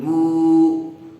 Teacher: پیش والے حرف کے بعد واو ساکن آیا ہوا ہے، اس لیے با کو کھینچ کر پڑھیں گے